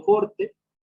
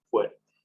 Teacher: La O tónica se vuelve o cambia al diptongo UE.